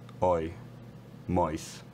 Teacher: for Lisa McGee I think this first element is more backed and more rounded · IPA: [ɔi]